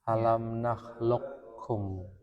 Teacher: Sepakat mengidgamkan qof ke dalam kaf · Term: idgham